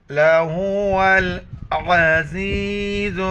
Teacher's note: واو کو لام کے ساتھ ملائیں گے اور عین کو گلے سے ادا کریں گے